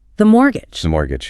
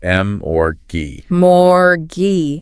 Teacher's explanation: The T in the middle is entirely silent.